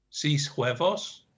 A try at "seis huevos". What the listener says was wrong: Seis huevos would be seis huevos. Seis huevos. Yeah, you're a bit too close to English there.